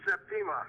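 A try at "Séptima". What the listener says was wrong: Accent on the first syllable, Septima.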